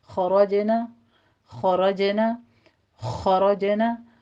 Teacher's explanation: खरजना में रा मुफ़ख़म पढ़ी जाएगी और जीम के ऊपर कलकला करेंगे, लेकिन ये याद रखिएगा कि जीम के ऊपर कलकला यहाँ पे सगीरा है, کبیرہ نہیں ہے کیونکہ یہ حروف مستعلیہ میں سے نہیں ہے، ٹھیک ہے۔